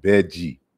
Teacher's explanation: And so when L is followed by I, the L turns into D. And sometimes this D, when followed by I, becomes J, you know, or Z, like you pronounce it Z, but it's like Beji.